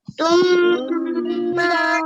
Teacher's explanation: Jadi ada usaha ya untuk masuk ke dalam hidung, itu harus ada usaha. Jangan hanya sekedar dibaca jam, tapi jam memang dioper suaranya ke hidung ya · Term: mim bertasydid